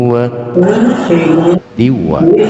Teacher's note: melebur harokat tanwin kepada huruf wawu disertai dengungan kadar panjang 2 harokat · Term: idgham bi ghunnah